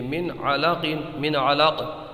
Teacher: اب یہاں سے دیکھیے یہ نون ساکن ہے، اس کے بعد میں یہ نون ساکن ہے، اس کے بعد میں یہ عین ہے تو نون ساکن کے بعد میں حلقی کا عین آیا ہے، حروف حلقی کا، اس وجہ سے یہاں پر اظہار ہوگا، یعنی غنہ نہیں کریں گے